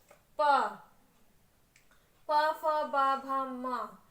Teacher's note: आपको पूरा ओस्ट का प्रयोग हो रहा है